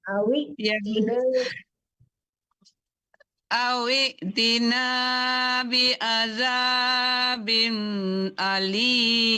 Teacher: itu amzah ya, dipentok sedikit mematikan amzah.